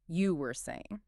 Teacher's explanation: You must use an upward questioning intonation at the very end of the word saying you were saying.